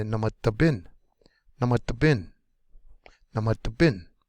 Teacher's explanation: Last syllable is going to be the most accented.